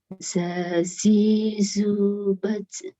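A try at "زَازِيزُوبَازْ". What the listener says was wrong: Baz. Agak ke jim itu. Baz. Baz. Agak maju, Bu. Yang agak nyentuh itu maju di ujung lidah. Kalau agak ke belakang itu jim dia. Baj.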